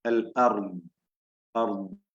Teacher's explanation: അൽ അർദ്, അർദ് എന്ന് പറയുമ്പോ ദ്വാദ് സുക്കൂൻ നൽകി വഖഫ് ചെയ്യുമ്പോഴുണ്ടാകുന്ന ആ ശബ്ദത്തിന്റെ ദൈർഘ്യം, നാവിന്റെ അരുവിൽ നിന്ന് പൂർണ്ണമായി ദീർഘത്തോടു കൂടിയുള്ള ആ ശബ്ദം, അർദ് എന്ന് കൽക്കല വരില്ല. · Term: റിഖ്വായ ദ്വാദിനെയാണ്